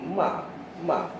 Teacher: makhraj huruf mim apa dia bibir dengan bibir